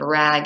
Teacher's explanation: The r sound is produced by the roof of the mouth. This is a palatal sound.